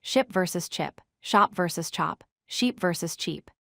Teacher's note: The key difference is that sh is a continuous sound while ch has a stop at the beginning.